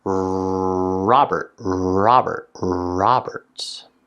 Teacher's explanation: When I make the r sound, I tend to put my top teeth behind my bottom lip. · my tongue is bunched up at the top of my mouth, and the sides of my tongue are touching against the sides of my back teeth. The R sound in the second part of my name is actually part of an R-controlled vowel.